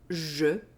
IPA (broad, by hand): ʒ